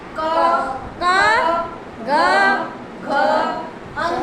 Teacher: કંઠ એટલે જે આપણા કંઠમાંથી બોલાતા હોય એવા વર્ણ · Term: કંઠ્ય